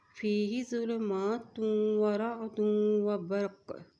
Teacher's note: یہاں پہ رکیں گے تو کاف پہ کلکلا کرتے ہوئے رکیں گے، کلکلے کا مطلب ہے کہ پلٹ کی آواز آئے گی